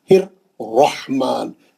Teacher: دوسرا را جب پڑھیں گے زبر کے ساتھ والا موٹا پڑھیں گے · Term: را موٹا